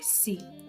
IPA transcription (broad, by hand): siː